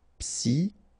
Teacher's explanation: Psychologique, okay, remember it's an exception here because you've got this C-H-O. Normally we should pronounce it sho, okay, but in that case we pronounce it ko. Psychologique, remember, final Q-U-E like that, K, psychologique.